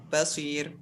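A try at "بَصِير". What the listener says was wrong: Coba panjangkan lagi. Iya, Jadi basir, ra-nya tipis. Walaupun sebelum ra ada huruf isti'la sad. Jadi jangan tebalkan. Karena dia tidak memberikan pengaruh. Karena ini ra-nya ra mutatarrif, ra di ujung. Sebagian qari membaca basir. Tebal ra-nya. Ini keliru. Namun tipis.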